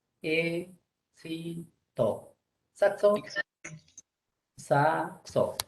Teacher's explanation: como la X representa dos fonemas, suena KS